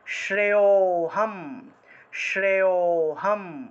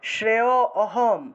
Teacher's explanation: লুপ্ত অ মানে হলো অ টা লুপ্ত হয়ে গিয়েছে